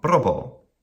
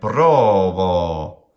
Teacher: So an iam, short and then long.